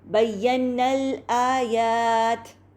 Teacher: ہم الف مد کو ڈراپ کر کے نون کا جو فتحہ ہے اس کو ڈائریکٹلی لام ساکنہ سے ملاتے ہوئے پڑھیں گے